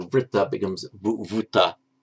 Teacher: After a labial, after a v, it just becomes an u. So vritta becomes vuta.